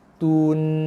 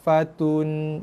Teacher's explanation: Bunyikan tu dulu dengan kadar satu harakat, baru masukkan bunyi nun mati. Tun. Lepas tu bunyi nun mati dia ada bunyi sikit.